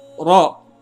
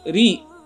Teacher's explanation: kalau ra-nya berbaris kasrah, maka ini dibaca tipis.